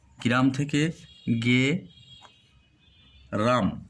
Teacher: উচ্চারণের সুবিধার জন্য সংযুক্ত ব্যঞ্জন ধ্বনির মাঝখানে যখন স্বরধ্বনি আসে একে বলা হয় মধ্যস্বরাগম, বিপ্রকর্ষ বা স্বরভক্তি।